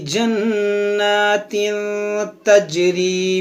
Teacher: तनवीन के बाद ता यहाँ पर इख्फा करेंगे, जी में कलकला करेंगे